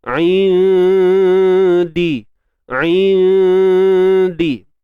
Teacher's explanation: Kita sembunyikan nun mati itu di sisi huruf dal. Dan huruf dal ni kita tahu ianya huruf yang nipis, maka dengung yang berlaku pun nipis. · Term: ikhfa hakiki